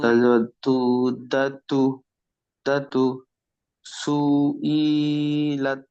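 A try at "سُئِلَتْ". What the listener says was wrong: সু ই দুটো সব টান হয়েছে, হারাকাত আছে, জলদি পড়তে হবে।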